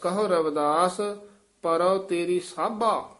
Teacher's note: ਸਾਭਾ ਹੀ ਉਚਾਰਨ ਕਰਨਾ ਸਾਂਭਾ ਨਹੀਂ ਕਹਿਣਾ